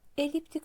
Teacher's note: Eliptik sözündə düşür vurğu sonuncu hecaya.